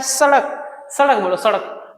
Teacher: direct जीभ को क्या होता है, टकराता है, और जीभ को सॉरी दांत को टकराता है, जीभ दांत में टकराता है, इसलिए दंतव्य, दांत में टकरा रहा है इसलिए दंतव्य